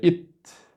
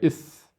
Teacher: التاء من طرف اللسان مع أصول الثنايا العليا، إت، أما الثاء فهو من طرف اللسان مع أطراف الثنايا العليا